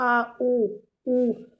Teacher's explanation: पश्च स्वर में आप देखेंगे आपका जीभ का जो पीछे का हिस्सा है वो काम करेगा। आ ऊ, आपके गले से आवाज़ आ रही है इसमें, देखो, आ ऊ, पीछे गले साइड से, ठीक है।